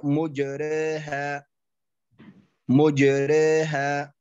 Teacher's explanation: يقراها بالضم الميم مع التقليل بضم الميم مع التقليل يقول هكذا مجرها مجرها مجرها مجرها هكذا